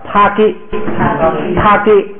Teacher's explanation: 第3竖行在第2音节的时候变成不送气，变成▁g